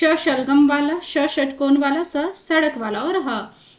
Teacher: इनके उच्चारण में मुख से गर्म हवा रगड़ कर निकलती है बाहर। तो इसीलिए यह उष्म जैसा कि नाम से ही पता चल रहा है उष्म का मतलब गर्म होता है। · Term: उष्म व्यंजन, ऊष्म व्यंजन